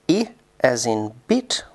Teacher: as in beat which is high front unrounded and tense I as in bit which is high front unrounded and LAX